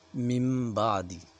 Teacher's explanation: نون ساکن ہے، میم ساکن ہے، یہاں پہ ہم اخفا کریں گے، ناک میں اس آواز کو چھپائیں گے